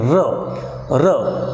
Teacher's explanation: air stream comes out through the gap between the tongue and the alveolar part. So there is a gap between the tongue and the teeth ridge, and the air stream passes through them, and the sounds produced are called as rhotic sounds.